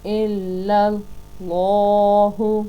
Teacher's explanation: لفظ اللہ کے لام کو موٹا اور پر کر کے پڑھیں گے کیونکہ اس سے پچھلے لفظ پر زبر آ گئی ہے۔